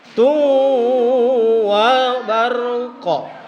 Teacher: tulisannya dun, tapi kalau dibaca duwa barqa. Ya. Jadi harus masuk ke huruf sesudahnya.